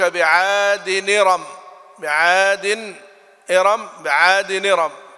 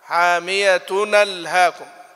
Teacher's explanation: ورشا ينقل حركة الهمزة إلى الساكن قبلها ويسقط الهمزة، فيتحرك الساكن بحركتها بشرط أن يكون الساكن آخر كلمة والهمز أول الكلمة الأخرى، وألا يكون الساكن حرف مد.